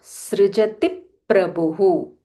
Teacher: because pra is a samyukta akshara, we have to stress a little more.